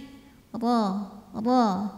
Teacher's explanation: bunyikan dengan tebal dengan pangkal lidah yang naik